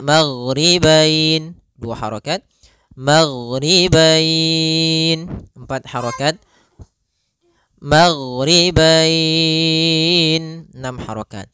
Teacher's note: Disebabkan karena adanya huruf fathah dan huruf bertemu dengan huruf ya sukun atau waw sukun di akhir bacaan. Panjang untuk mad lin sendiri kita boleh panjangkan 2 harokat, boleh 4 harokat, boleh pula 6 harokat.